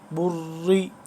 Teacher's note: اب دیکھیں را ہم اس کو باریک پڑھ رہے ہیں